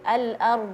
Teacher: Jadi al-ard jadi suaranya yang mengalir. Jadi bukan nafasnya yang diberhentikan.